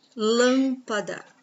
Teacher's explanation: a sílaba tônica é a antepenúltima sílaba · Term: proparoxítonas